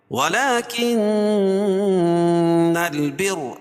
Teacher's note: نون مشدد ہے، غنہ ہوگا، اور رائے مشددہ کے اوپر زبر یہ پیش ہو تو را پر پڑھی جاتی ہے.